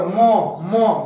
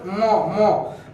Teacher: मो नाक से बोला जाता है ना, मो से उच्चारण होता है, इसी को अनुनासिक वर्ण कहते हैं।